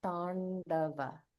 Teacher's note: So there's no Mahaprana here. So we just want to pronounce it like the Alpa Prana.